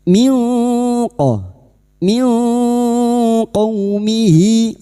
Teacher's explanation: Nun sukun bertemu qof ikhfa hakiki. Kita samarkan bunyi nun sukun dan mendengung selama tiga harakat.